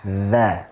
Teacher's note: Kalau dzal, dza ada sedikit dari ujung lidah yang keluar. Sekali lagi jangan berlebihan di dalam mengeluarkannya.